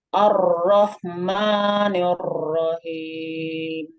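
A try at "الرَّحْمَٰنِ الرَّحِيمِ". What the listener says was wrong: Takrirnya ditahan. Arrah. Takrir pertama, takrir ketika pertama kan emang takrir. Nah, habis itu Ibu turunin lidahnya. Jadi supaya ketahan takrirnya. Arrah.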